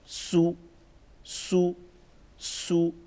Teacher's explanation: سختی کے ساتھ پڑھیں گے اور سیٹی کی آواز بھی تھوڑی سی اس میں ایڈ کریں گے